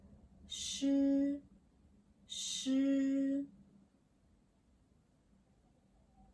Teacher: sh is like English sh in show. Tongue is back. Lips are little rounded.